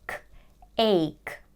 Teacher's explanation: It's a one-syllable word. We start with the A diphthong and then we have the K sound.